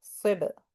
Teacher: We're not pressing the lip. We're just letting the lip hit si ba and bounce off. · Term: qalaqala